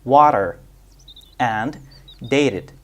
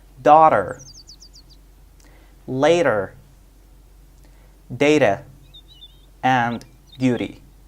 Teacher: It is called the flap T. When T occurs between two vowels, it sounds like a quick D. For example, water and dated, or between a vowel and a voiced consonant.